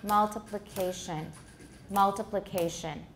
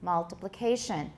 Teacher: you'll find that you can tap on the first and the fourth syllables